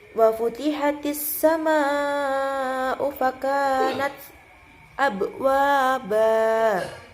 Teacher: Kemudian di ayat ke-19 itu ada dibaca saktah pada bagian fakanats, dan di bagian fakanats itu kita berhenti sejenak tanpa bernafas